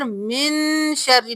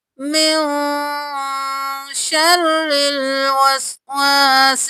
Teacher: اب سورۃ الناس میں دیکھیے، یہاں پر اخفا ہوگا، نون ساکن ہے تو ہم یہاں پر من شرری نہیں کریں گے، من کریں گے یا من شرری کریں گے تو اظہار ہوگا۔ ہم نے نون کو ظاہر نہیں کرنا، ہم نے چھپانا ہے